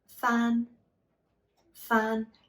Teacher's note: and so fun would be the highest tone the first tone in the utm system